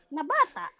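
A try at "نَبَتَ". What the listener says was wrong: Iya tapi bacanya tekanannya kurang bagus. Coba lagi. Tekanannya.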